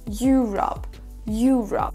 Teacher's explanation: on accentue le mot Europe sur la première syllabe. Il faut qu'elle ressorte plus que les autres.